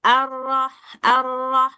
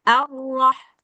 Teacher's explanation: Roh tafkhim dia enggak terlalu banyak getaran juga bukan arh bukan begitu. Nah, jadi takrirnya tetap dapat cuman dia enggak sampai bergetar terlalu banyak kayak ro bahasa Indonesia